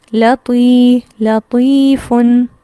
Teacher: طی یہ لمبا کر رہی ہوں، نہ میں لام زبر لا کو لمبا کر رہی ہوں نہ فا کی تنوین کو. فن اس کو سمپل پڑھ رہی ہوں، لام زبر لا پڑھ رہی ہوں. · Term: حرف مدہ